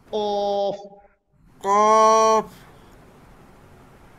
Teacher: কফটা হলো আপনার জিহ্বার গোড়া তার উপরের তালুর সঙ্গে লাগায়, জিহ্বার গোড়ালিটা তার উপরের তালুর সঙ্গে লাগায়।